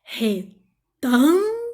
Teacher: Não é o lo, não é o gu, é o tam. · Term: sílaba tônica